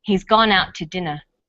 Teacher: We stress he's, gone, out, and dinner. The to is unstressed. When we link out, which is stressed, and to, which is unstressed, the final t sound in out is held slightly longer.